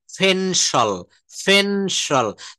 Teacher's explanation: দেখেন P কে প না বলে আমরা ফ বলবো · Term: মহাপ্রাণ